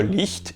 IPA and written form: ˈlɪçt (Licht)